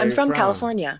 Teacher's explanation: with each statement, my intonation went down at the end